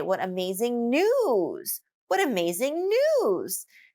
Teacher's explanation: that's also showing your excitement but the emphasis is on the news part